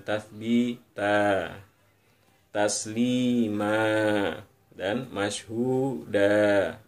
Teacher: Tanwin kita baca ketika berhenti, kita baca cukup satu saja, tathbitan. Tidak kita baca tathbitan ketika berhenti atau waqaf, tapi kita baca tathbita dengan memanjangkan dua ketukan